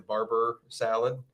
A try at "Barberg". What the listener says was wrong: the Barberg, not Barber.